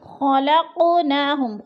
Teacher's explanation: خلقناہم، خلق قاف پہ قلقلہ ہے، قاف حروف قلقلہ میں سے ہے اور ساکن ہے تو ادھر قاف کو ہم نے ہلا کر پڑھنا ہے